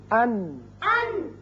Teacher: تین سامنے والے دانتوں سے لگنے سے نون